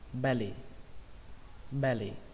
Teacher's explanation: Trọng âm của nó rơi vào âm đầu tiên, âm B, xuống giọng âm thứ hai, lì